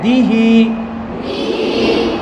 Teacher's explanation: দালকে জেরের উচ্চারণটা কি হবে সবসময় পাতলা করে, দিহি। দালকে পাতলা করব, হা খারাজের হি পাতলা করব।